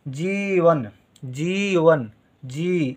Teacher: जा के साथ इ की मात्रा का उच्चारण हो रहा है और देर तक हो रहा है